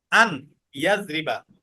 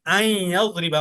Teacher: অর্থাৎ নুনটাকে ইয়ার সাথে মিলিয়ে পড়েছো। তো এটাই ইদগাম, নুনটাকে তুমি ইয়ার সাথে যে মিলিয়েছো এটাকে বলা হয় কি ইদগাম।